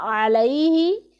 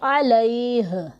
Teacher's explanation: ہا کی آواز آنی چاہیے لیکن اسے ہم ساکن کر دیں گے